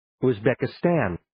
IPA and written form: uzbɛkɪ'stæn (uzbekistan)